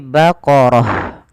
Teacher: huruf ta yang bentuknya bulat ini kita namakan dengan ta marbutah Apabila ada Ta marbutah di akhir bacaan ketika wakaf diganti dengan huruf ha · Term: ta marbutoh